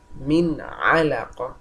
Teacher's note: Then I'm exposing it out clearly. There is no nasal sound coming out from the nose, no gunna, and no hiding of any letter.